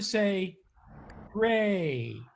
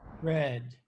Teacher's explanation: And you see that gray feels kind of tense, yes, and red feels kind of relaxed.